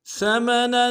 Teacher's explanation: ثمنا، سا کو باریک ادا کرنا ہے، میم کو نرم سے ادا کریں گے، نون کے اوپر تنوین ہے، غنہ کریں گے، غنے میں ایک الف میں غنے کو کھینچیں گے